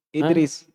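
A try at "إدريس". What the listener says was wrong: Tanwin? Tanwin? Tidak ditanwin.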